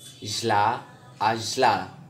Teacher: alveolar voiced lateral fricative is jla, ajla.